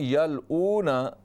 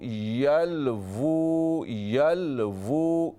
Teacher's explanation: हमें पढ़ना है वाव उल्टा पेश वो, यल वो, यल वो। वाव दोनों होंठों की गोलाई से अदा होता है। दोनों होंठों को गोल कर लें और आवाज़ होंठों से निकालें।